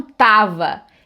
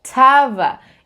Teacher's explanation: E esse é o som verdadeiro do T em inglês, é um som aspirado, ou seja, vem um arzinho junto com aquele som de T